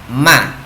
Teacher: Huruf mim memiliki sifat jahr, nafas tertahan